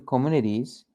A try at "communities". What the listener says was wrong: Yeah, communities. Correct.